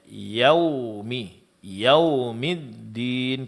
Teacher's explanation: pengucapan huruf dal di sini jangan sampai ditebalkan karena huruf dal huruf tipis